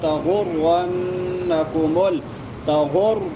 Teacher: را موٹی ہوگی، غن غنہ ہوگا